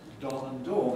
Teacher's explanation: in many american varieties you don't actually have a contrast between don and dawn